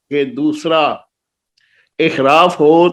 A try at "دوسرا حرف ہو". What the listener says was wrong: احراف کہاں سے آ گیا؟ دوسرا حرف ہو.